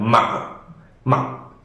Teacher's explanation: like an abrupt stop, so it's something like just go quickly down, ma, ma. And again, one might spot a small, tiny rise back in the end of this even quick abrupt one, but not necessary to focus on, especially during quick speech.